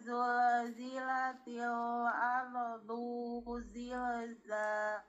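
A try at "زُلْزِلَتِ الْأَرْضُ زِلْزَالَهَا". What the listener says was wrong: tidak ada dumah tetapi enggak ada wau tidak dipanjangkan.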